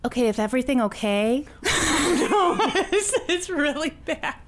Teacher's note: it's a combination of vocal fry Valley Girl lisp